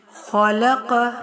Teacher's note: خو اور قوف حروف مستعلیہ میں سے ہیں، ان کو موٹا پڑھنا ہے